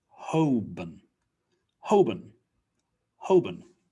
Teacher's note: And the born just is a weak sound, so it's bun.